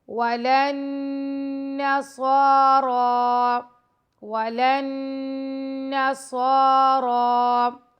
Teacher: نون کے اوپر تشدید ہے، یہاں پہ ہم غنہ کریں گے، صاد اینڈ را کو موٹا پڑھیں گے اور دونوں پر کھڑا زبر ہے تو دونوں کو 2 سیکنڈ لمبا کریں گے۔